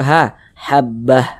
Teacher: kalau misalkan kita berwakaf tepat di huruf Ta marbutoh Maka huruf ta-nya dirubah menjadi huruf h